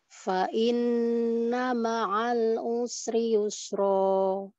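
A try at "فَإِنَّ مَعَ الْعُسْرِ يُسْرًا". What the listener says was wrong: Nah, rohnya kepanjangan.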